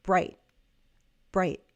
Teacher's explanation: I'm cutting off the vowel sound with a glottle stop.